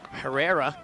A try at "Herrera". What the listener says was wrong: I believe it's pronounced Reha. Silent H at the beginning.